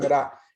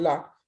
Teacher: Si ustedes pronuncian ra y luego pronuncian la, se van a dar cuenta que lo único que pasa con la lengua es que cuando pronunciamos ra, la lengua hace un puente hacia abajo. Cuando pronunciamos la lengua sube y toca el paladar, pero está en la misma posición, no se mueve.